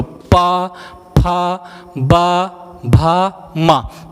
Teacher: पा वर्ग बोलते हैं तो आपके दोनों ओंठ आपस में चिपक जा रहे हैं, अर्थात हम कह दें कि चुम्मी चुम्मा वाले वर्ण। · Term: ओष्ठ मूल वर्ण